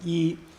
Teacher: So when the tone is like this, that's because the pitch of your voice doesn't change. It's high, first tone